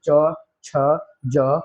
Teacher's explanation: जीवा का अग्र भाग कठोर तालू को स्पर्श करता है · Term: तालव्य